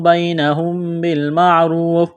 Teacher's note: میم ساکن کے بعد با ہے تو یہاں پر غنہ کریں گے، آواز ناک میں چھپائیں گے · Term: اقلاب